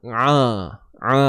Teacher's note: Huruf ain sempitkan di bahagian tengah kerongkong kita. Jangan bunyi hidung tuan-puan, ingat. Pastikan bunyi kerongkong ni.